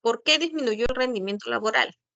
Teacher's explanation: su entonación no puede ser ascendente porque la marca de la pregunta ya está en el pronombre entonces su entonación es descendente